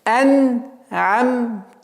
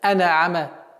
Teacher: нужно мягко, нежно произносить нун и мим. Почему? Потому что у этих звуков есть свойство назализация. Они присущи этим звукам.